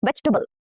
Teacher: between B and L, there is again a schwa